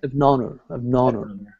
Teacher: The H sound should be like dropped.